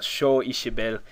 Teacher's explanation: when a slender vowel is near an S, it becomes an SH sound